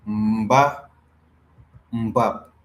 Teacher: whenever you have a plosive, it is no more an N anymore, it becomes an M